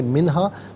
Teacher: خیرن منہا غلط، خیرن منہا، من علیحدہ ہا علیحدہ اور ملا کر پڑھیں گے منہا، نون ساکن کے بعد ہا حرف حلقی ہے تو نون ساکن کو اظہار کے ساتھ پڑھا جائے گا، یعنی غنہ یا اخفا نہیں کیا جائے گا